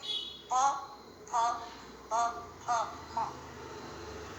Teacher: प फ ब भ म दोनों होंठ मिलाकर बोले जा सकते हैं। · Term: ओष्ठांग